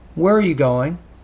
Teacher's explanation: it's a wh question and the tone drops at the end you want to make sure that you you have a drop